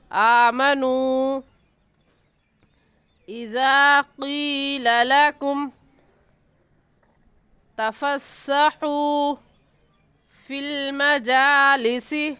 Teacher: حروف مدہ کے بعد حمزہ اگلے کلمے میں ہے تو اس مد کا نام ہوگا مد منفصل اور مد جائز، اور اس مد کو 3 الف کے برابر کھینچیں گے